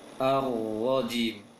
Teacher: Ra yang bertasydid ini langsung ditebalkan ketika masuk tasydidnya.